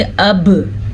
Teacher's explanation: अब बा के ऊपर साकिन है, जज़म है, तो बा पे झटका होगा